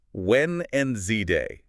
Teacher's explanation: Say it how it sounds. That D in the middle gone. The first E after the N, it's pretty much gone, too. So it just collapses.